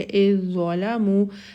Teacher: اذ ظلموا میں ذا کی کوئی بھی صفت باقی نہیں رہے گی، حمزہ جو ہے وہ ڈائریکٹلی ذا کے ساتھ جا کے مل جائے گا، اور ہم اس زال کی کوئی صفت باقی نہیں رہے گی، تو ہم اس کو پر ادا کریں گے اذ ظلموا۔